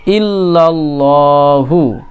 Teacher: এখানে লা বলে ল একটু পুর করে বলবো